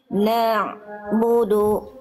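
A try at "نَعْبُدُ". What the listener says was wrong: Nah, itu udah bagus tapi jangan na'budu. Nah, di pas mau bunyi terus jalan si ainnya, suaranya. Bukan na-nya yang dipanjangkan, bukan na, bukan tapi nya itu yang dialirkan sedikit. Nah, ada bunyi ain dilafalkan dari tengah tenggorokan. Nah, dari na langsung masuk ke ain Bunda, jangan jangan isba, jangan diseret na-nya.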